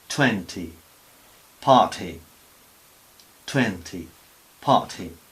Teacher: Después de articular la boca para decir T, pues soltamos un poco de aire